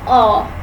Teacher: It is a vowel which is produced when tongue is in half low back position in the mouth.